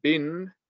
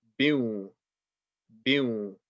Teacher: instead of reading bin, we're gonna read biu, biu, and we will apply a ghunna on the waw. And the waw is also a stretch letter. · we're going to remove the noon sound, merge with the waw, and apply ghunna